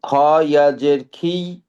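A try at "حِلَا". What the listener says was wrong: এটা এটা খ না, এটা হলো হা। হাইয়াদের হি, লাম জবর হি।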